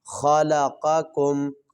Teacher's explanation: خا کو بھی موٹا کریں گے اور قاف جو پہلا ہے اس کو بھی موٹا کریں گے